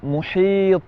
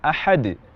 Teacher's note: disebut dengan Qalqalah kubra lebih besar lebih nyata dibandingkan dengan Qalqalah ketika terjadi di tengah-tengah kalimat yang sedang kita ucapkan